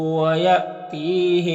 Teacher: یہاں پر حمزہ ساکن ہے، جھٹکا لگے گا، اور یہاں پر یا مدہ ہے۔